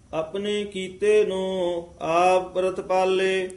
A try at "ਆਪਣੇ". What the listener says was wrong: ਇੱਥੇ ਆਪਣੇ ਪਦ ਆਇਆ ਹੈ, ਇੱਥੇ ਔਂਕੜ ਨਹੀਂ। ਇੱਥੇ ਸਿੱਧਾ ਹੀ ਆਪਣੇ ਉਚਾਰਨ ਕਰਨਾ ਹੈ।